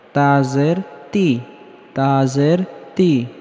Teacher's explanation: তা উচ্চারণের সময় হালকা বাতাস বের হবে